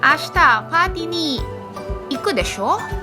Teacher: So when the speaker expects that the listener has some knowledge on the topic being discussed and that the listener will agree with the speaker's view, the shou is said with a rising intonation to confirm the listener's agreement